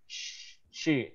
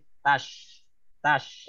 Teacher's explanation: Nah. Jadi Shin, Shin itu tengah-tengah lidah menyentuh ke langit-langit atas.